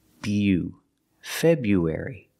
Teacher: using the long you like you and few Feb U link the sound U after the B